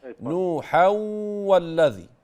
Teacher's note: ماتنطقش نون بعد الحاء